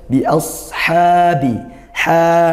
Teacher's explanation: dibaca panjang satu Alif atau dua harakat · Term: Mad Thobi'i